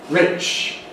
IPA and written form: rɪʧ (rich)